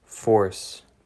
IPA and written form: foɹs (FORCE)